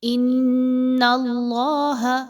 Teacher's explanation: اپنی زبان کو تھوڑا اوپر کی طرف اٹھائیے تو اللہ کا جو حرف ہے وہ پر کر کے پڑھا جائے گا